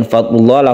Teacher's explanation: Kemudian fadlullah, lafadz Allah ini dibaca tebal karena sebelumnya ada dhammah